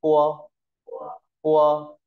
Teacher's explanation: p ta đọc nguyên p như ta bật nhẹ hơi một chút